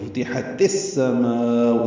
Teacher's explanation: فتحت، تا ساکن تھا، السماء کا حمزہ عارضی ہونے کی وجہ سے ملا دیا گیا، وہ فتحت السماء، ادغام شمسی ہے. ما میں الف مدہ کے بعد حمزہ آنے کی وجہ سے مد متصل ہے، لمبا کریں گے 4 حرکات سے زیادہ